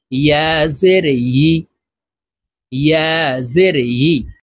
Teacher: থেকে উচ্চারণ করি ইয়া জের ই এভাবে বলে থাকি প্রিয় দর্শক ইয়া হরফের উচ্চারণ জিহ্বার মধ্যখান থেকে করতে হবে